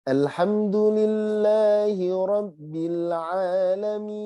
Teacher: Kemudian izhar halki. Makanya nun sama mim ketika sukun tetap harus kehidungin. Maka kayak ada ekornya sedikit. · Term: gunnah asliyah